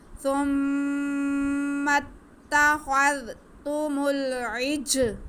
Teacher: جیم حروف اخفا میں سے ہے، حروف قلقلہ میں سے ہے تو جیم ساکن ہے، اس کی آواز کو ہم جنبش دے کے پڑھیں گے